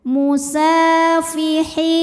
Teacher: ada ya sukun didahului baris kasrah, maka huruf ha kita panjangkan 2 harokat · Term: mad tabi'i dhahiri